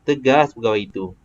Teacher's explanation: Tegas tinggi, pegawai itu dia jadi rendah. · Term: ayat songsang